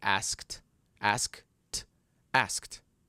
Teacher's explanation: No, it's only air. So it's an unvoiced sound. Therefore, the ending will be t.